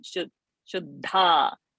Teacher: We should not say niravadya and not buddhya, shuddha. So the dha mahaprana should come.